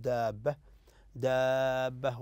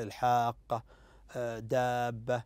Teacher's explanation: مقدار مده هنا ست حركات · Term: المد اللازم